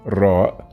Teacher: same as the R in English, but with more rolling sound